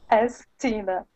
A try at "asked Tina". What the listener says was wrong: So on this word, okay, because ast ends with a T sound and Tina starts with a T sound, we actually combine those and we say Astina. Astina.